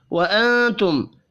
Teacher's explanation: میم ساکن کے بعد تا ہے اظہار شفی ہوگا، غنہ نہیں ہوگا